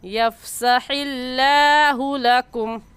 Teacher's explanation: لفظ اللہ سے پہلے ہا ہے جس کے نیچے زیر ہے، اور قاعدہ ہے کہ لفظ اللہ سے پہلے زیر آ جائے تو لفظ اللہ کو باریک کر کے پڑھتے ہیں. باریک کرنے کا طریقہ کہ آپ کے دونوں ہونٹ پھیل جائیں.